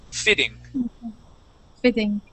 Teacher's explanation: we're going to change those two T's to a D sound